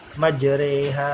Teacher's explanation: Jadi cara baca imalahnya gimana? Mencondongkan bacaan fathah majro ro ke harokat i majri, tapi bukan ro, bukan ri di tengah-tengahnya, kurang lebih 2/3 lah. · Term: bacaan imalah